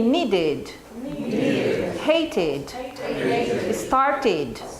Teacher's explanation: You have ID sound when the verb ends in T and D, and you have an extra syllable